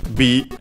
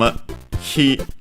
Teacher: we change it into b, adding the dakuten, making it voiced, because it's the second part of a compound and of a strictly Japanese word.